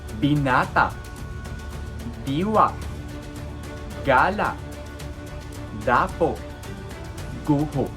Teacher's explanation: Itong mga salitang ito ay sinasalita ng dahan-dahan. Ito ay may impit sa dulo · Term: malumi